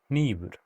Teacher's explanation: a voiceless alveolar nasal